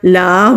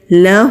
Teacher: नरमी से लाम को टच करके हा पर जाना है